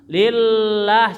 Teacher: Lillah sama kata lillah, lahnya panjang 2 harkat. Ini madnya mad di ta'zim, untuk mengagungkan saja.